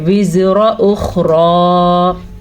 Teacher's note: باقی زا کو لمبا نہیں کرنا، واؤ کے بعد الف مد ہے تو اسے تو ہم کھینچ کے پڑھیں گے. زا اور را لمبے نہیں کیے جائیں گے، لیکن را موٹی یعنی کہ پر کر کے پڑھی جائے گی